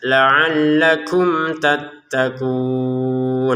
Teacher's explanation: Mim sukun bertemu ta ini kita baca dengan jelas.